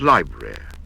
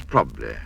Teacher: here are some common words which suffer by being reduced in length as a syllable is dropped